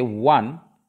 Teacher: Similarly, when we are talking about 1 rupee note, O, the letter is O, vowel, but the sound comes 1. When we say 1, WA sound is coming, and W is a consonant sound.